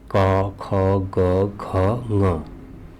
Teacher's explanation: जैसे कवर्ग का उच्चारण होता है, जीभ का जब पिछला हिस्सा उठकर गले के अगले भाग पर लगता है तो कवर्ग के वर्णों का उच्चारण होता है